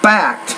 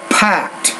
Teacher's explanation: So the P and the T sounds, you want to be pronouncing these with more air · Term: explosive consonants